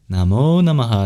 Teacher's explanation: namah has a very interesting sound at the end which is an expulsion of breath